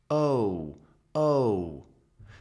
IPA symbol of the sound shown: oʊ